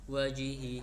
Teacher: yaitu di mana kondisi ee ha domir bertemu dengan ee hamzah. Cara membacanya dipanjangkan sebanyak empat harakat atau lima harakat. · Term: mad silah kubra, mad silah kubro